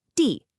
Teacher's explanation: it has to be a sharp, confident drop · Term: fourth tone